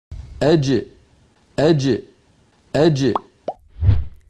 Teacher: زبان کا درمیانی حصہ اور اوپر تالو کے درمیان سے جیم ادا ہوتی ہے، اور ملاحظہ فرمائیں کہ اس کا مخرج بالکل بند ہو جاتا ہے۔